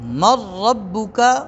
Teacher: را اور لام میں جب ہم نے ادغام کیا ہے تو اس میں نون کی کوئی صفت باقی نہیں رہی